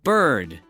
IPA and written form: bɝd (bird)